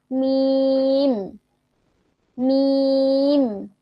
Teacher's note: মিম কি দুই ঠোটের শুকনা জায়গা হতে